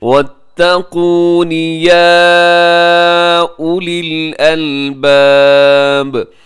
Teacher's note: وَاتَّقُونِ يَا أُولِي الْأَلْبَابِ، اب اس کے اوپر جو مد ہے مد منفصل ہے، آپ اسے 4 سیکنڈ تک آپ اسے لمبا کیجیے گا۔ یا اولی الالباب، یہاں واو جو ہے وہ نہیں پڑھی جائے گی، اسے یا اولی الالباب پڑھنا درست نہیں ہے۔